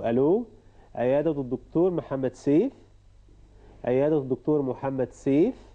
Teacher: So again, it's a question. So this is why we have to use the rising intonation.